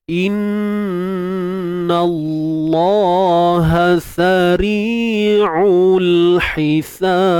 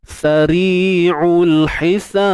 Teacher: Baik, bila kita nak lantunkan pada ba tu, qalqalah sughra kan, lantun pada ba tu pastikan tidak ada bunyi suara yang tertahan ataupun peti suara yang tertutup